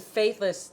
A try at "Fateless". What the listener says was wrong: Fateless, Yeah. You said faith.